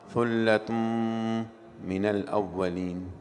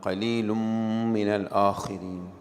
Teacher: tanween followed by mim. Idgham ma'al ghunna.